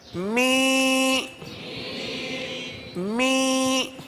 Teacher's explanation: دیکھیں ناک میں آواز لے جائیں گے، زیر کی آواز نکالیں گے